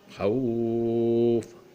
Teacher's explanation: اس کو وقف کریں گے خوف، یعنی فا کو سکون کر دیں گے، اور وا جو ما قبل میں حرف علت ہے اسے 3 الف کے برابر کھینچیں گے